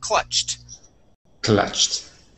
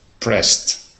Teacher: when we add an ed that sounds like a t